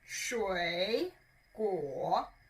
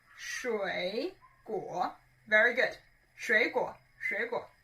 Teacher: So 水果 you can understand as fruit always contains a lot of water, and therefore 水果, 水果, 水果, both of them are third tone, which means your tongue needs to go lower. 水果, it goes lower and a little bit up.